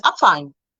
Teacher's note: When you have that B, it doesn't sound like a B, it sounds like a P.